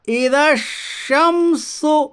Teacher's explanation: یعنی الف اور لام کو نہ پڑھ کر بلکہ بعد والے حرف سے ملا کر پڑھیے، کیونکہ نہ الف پڑھا جائے گا اور نہ ہی لام پڑھا جائے گا۔ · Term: ادغام شمسی